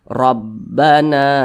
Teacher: huruf alif apabila dia berbaris ke atas maka dibaca panjang maka huruf nun dibaca panjang Karena berbaris ke atas atau berbaris fathah dan posisinya tepat berada di belakang huruf alif Mad Thobi'i panjangnya dua harakat atau kira-kira dua ketukan Rabbana nah · Mad tabi'i panjangnya 2 harakat atau kira-kira 2 ketukan.